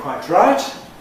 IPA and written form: kwaɪtraɪt (quite right)